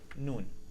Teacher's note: the noon is pronounced with the tongue and the upper of the palate